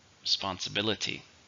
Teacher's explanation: six stress on the fourth